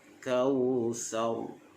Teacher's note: Pastikan bibir kita ni diangkat ke atas. Kautsar. Barulah ra itu dapat menyebutnya dengan tebal. Baik, itu berkaitan dengan bacaan hukum, bacaan tajwid bagi ayat pertama surah Al-Kautsar ini.